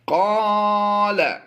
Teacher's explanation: یہاں پر ہم لمبا نہیں کریں گے، لام کو لمبا نہیں کریں گے بلکہ ہم نے قاف کو لمبا کر کے پڑھنا ہے۔